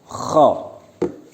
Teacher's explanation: Makharijul hurufnya bertempat pada puncak tenggorokan.